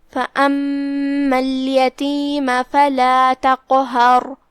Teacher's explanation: آخری میں را ہے, را پہ جو کہ ہم رکیں گے تو ہم اس پہ جزم سے رکیں گے لہذا اس کا حکم ہوا تفخیم کیونکہ اس سے پہلے والے حرف پہ زبر ہے تو ہم را کو بھاری آواز میں پڑھیں گے, قاف کو بھاری آواز میں, پھر ہا کو پتلی آواز میں, پھر را کو پھر بھاری آواز میں